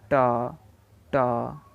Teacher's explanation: ये मूर्धा से उच्चारित होता है, तो इसलिए ट का उच्चारण स्थान मूर्धा है